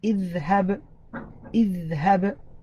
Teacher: you're going to sound the qalqala on the letter ba being part of the letters of qalqala.